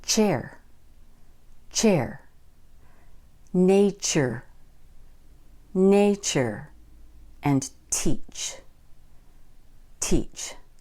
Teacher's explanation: If you put these together, you get the sound j, j, as in gin, gin, joy, joy, and edge, edge. Now we have t and sh. This gives us the voiceless sound ch